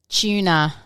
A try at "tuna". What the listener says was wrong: There's no CH. There are no CHs in tuna. It's a T. Tuna.